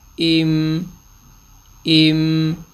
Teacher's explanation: میم کی آواز آدھے سیکنڈ کے لیے آٹومیٹکلی ناک میں چلی جائے گی